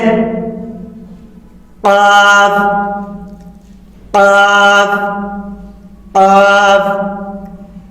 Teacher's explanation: غین خا حلق کے منہ کے جانب والے حصے سے ادا ہوتے ہیں، جیسے غائن غائن غائن غائن۔ قاف زبان کی جڑ کی ابتدا اور اس کے مقابل اوپر کے تالو سے ادا ہوتے